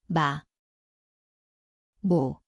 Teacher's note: 미음, Ito ay parang A, ang lugar ay parehong labi, nasal